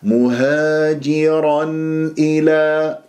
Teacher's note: تنوين فتح جاء بعد همزه الى اظهار اسمع النون المظهره